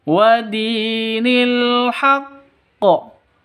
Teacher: panjang dua ketukan. Karena ada ya mati diawali dengan kasrah atau ya mati sebelumnya berharakat kasrah. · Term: mad asli